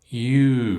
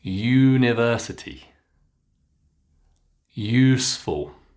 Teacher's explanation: Now notice the rest of the words, I've put them in yellow because yes, it's the letter U, but it's not the short U pronunciation we've been practicing. It's the long oo with a y, which makes you.